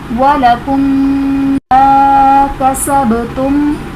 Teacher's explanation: میم ساکن کے بعد دوسری میم آ رہی ہے تو یہاں پر ادغام شفوی کا قاعدہ بنے گا